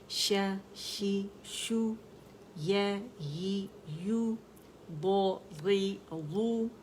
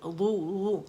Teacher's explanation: ضو سائڈوں سے آئے گا، دو کر کے دال کا مخرج موٹا نہیں کرنا، میں دال کا مخرج ٹچ بھی نہیں کرنا.